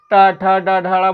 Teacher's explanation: ट ठ ड ढ बोल रहे हैं मूर्धा को छू रही है